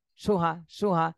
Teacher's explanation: সুহাতে কোন টান দেয়া যাবে না এই দুইটাই হরকত